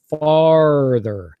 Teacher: in North America we'll we'll say farther so it's that really strong R